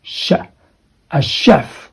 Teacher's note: CH is not pronounced as CH okay not CH sound it should be like the sh sound